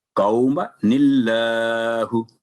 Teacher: میم پر فتح کے ساتھ جو الف ہے وہ نہیں پڑھا جائے گا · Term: الف سائلنٹ